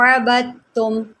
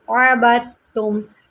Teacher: اس لفظ کو آپ سمجھیں، یہ کافی زیادہ مشکل ہے، دیکھیں اگر پہلا حرف متحرک ہو، دوسرا ساکن ہو، تیسرا مشدد ہو، ہم متحرک کو مشدد کے ساتھ ملاتے ہیں، دال ہم نے یہاں پر چھوڑ دینی ہے۔ آپ غور کریں کہ میں اس کو کس طرح پڑھ رہی ہوں، عَبَدتُّم، با کو میں نے تا کے ساتھ ملایا ہے